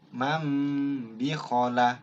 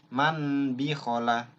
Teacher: Ada satu huruf, yaitu ba. Bunyi N-nya berubah menjadi M. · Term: iqlab